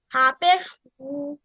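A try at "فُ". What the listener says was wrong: হা না ফা। এফ ফা পেশ ফা পেশ ফু দেন।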